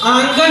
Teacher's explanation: बोलते समय हवा मुंह और नाक दोनों से एक साथ निकलती है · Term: अनुनासिक